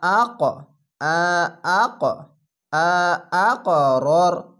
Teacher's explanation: কলকলা ধাক্কা মেরে ওপরে সাউন্ড যাবে